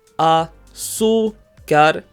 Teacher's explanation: in reality, we stress the second to last syllable, azúcar. We therefore add an accent mark over the U, azúcar.